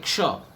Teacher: ક્ષ, તેમાં ક અને મૂર્ધન્ય શ એ બંનેને સંયુક્ત કરી અને ક્ષ બનાવવામાં આવે છે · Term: સંયુક્ત વ્યંજન